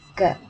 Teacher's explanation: when you pronounce g there's no airpuff